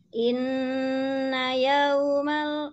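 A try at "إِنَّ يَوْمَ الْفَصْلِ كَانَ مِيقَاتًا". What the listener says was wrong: Masih kurang turun. Alfafa inna yaumal fas. Nah, ke sana. Kurang turun. Wajannatin alfafa inna yaumal fas.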